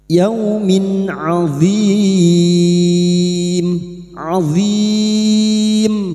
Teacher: kasr tanwin bertemu ain idhar halqi. Dibaca jelas tanpa mendengung.